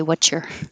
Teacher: an s and a y can make a cha